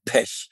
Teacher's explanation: Wir können kurz offen E sprechen, wie in Pech.